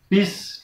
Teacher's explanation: bis itu suara sinnya tipis, bis, dan cara membacanya harus ditekan, bis, tidak boleh dipantulkan.